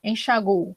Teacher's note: As duas formas são possíveis, com uma ressalva de que se eu coloco o acento, eu vou pronunciar a sílaba tônica no chá. Se eu não coloco o acento, eu vou pronunciar a sílaba tônica no gu